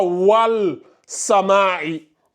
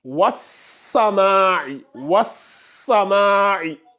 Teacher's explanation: C'est qu'on fait, on passe directement du waw, vu que lui, il n'existe pas. Donc, on passe directement du waw, comme ça, à la lettre solaire